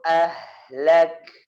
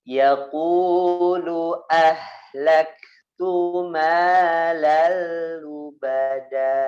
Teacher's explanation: Hamesnya jangan lupa ditekan di ka-nya, kemudian keluarin napas sedikit